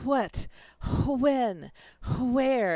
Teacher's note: it was pronounced with a very strong H sound at the beginning before the W